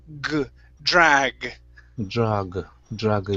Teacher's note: Now remember, this is a voiced sound. If it's unvoiced, it sounds like a K. So you are saying a word that sounded similar to drag, with a k sound at the end.